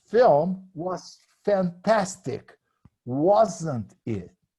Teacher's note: when you know the answer and you just want or expect the other person to confirm it for you then the intonation is falling see the arrow here go down like that film was fantastic